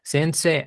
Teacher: Recuerdan que la E con I se pronuncia como E larga.